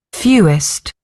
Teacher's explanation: There is a W there, but it sort of disappears half the time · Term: W sound